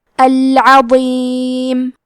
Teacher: کلمت العظیم میں حرف الضو ہے، وہ کی ادائیگی زبان کے سر اور اوپر کے دانتوں کے اندرونی کناروں سے ہے، وہ حروف تفخیم میں سے ہے، تو ہم یہ حرف کو بھاری آواز میں پڑھیں گے